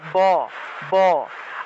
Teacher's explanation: আমাদেরকে দুইটা ঠোঁট লাগাতে হবে ঠোঁট লাগিয়ে ব উচ্চারণ করতে হবে